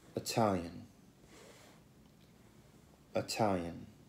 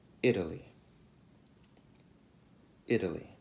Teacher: La T in Italian è unvoiced e la T in Italy è la voiced T.